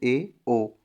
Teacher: अर्ध समृत जिसमें मुख थोड़ा बंद रहता है थोड़ा खुला